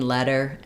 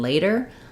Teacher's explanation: they're both stressed on the first syllable second syllable sounds the same the difference is that letter has the F vowel like in